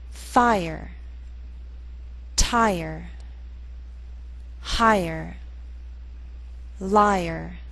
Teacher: in these words be sure to make the ER sound a separate syllable